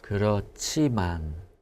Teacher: anytime a syllable ends in the H sound, it kind of adds that accent to the next one. So our JCH sound becomes a stronger CH